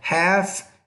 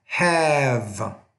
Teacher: Off, off, No, it's off of, half, half, half, have. Notice when the F is at the end, the vowel before it's a little shorter. When the V is at the end of the word, the vowel before is longer.